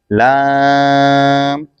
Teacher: لام زبان کا کنارہ دانتوں کی جڑ کی تالو کی جانب سے ادا ہوتا ہے